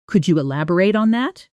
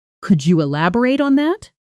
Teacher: Listen to this phrase with rising intonation at the very end.